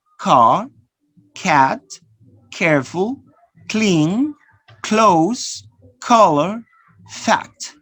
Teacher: Notice the paper moves, right? So it means that you produce it with aspiration. · So plosive velar sounds. The first sound is voiceless.